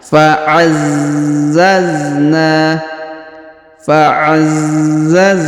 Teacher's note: Huruf za perhatikan berharokat tasdid, maka kita tahan